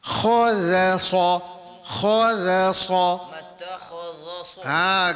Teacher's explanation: Di tengah-tengah dia huruf zal. Zal berbunyi tarqiq, berbunyi nipis.